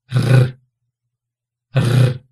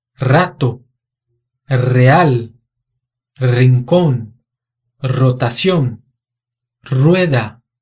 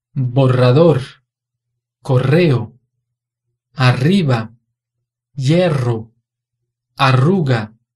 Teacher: Som vibrante múltiplo é aquele em que a ponta da língua encosta no céu da boca e vibra, produzindo esse som aqui, ó.